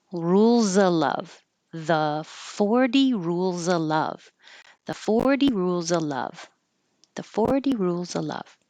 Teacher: I want you to notice I didn't say of love. So you don't have to say the V in of if there's a word with a consonant after it. So that's why I'm going to change it to rules of love.